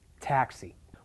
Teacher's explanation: Taxi because that's the most important word in the sentence and it happens to be stressed on the first syllable · it happens to be stressed on the first syllable, taxi